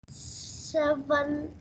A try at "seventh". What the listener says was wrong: seventh. Okay, it has a th phonetic sound at the end.